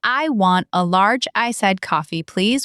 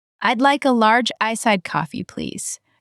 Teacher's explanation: You push large iced coffee. I'd like a is quick, please is polite, but lower.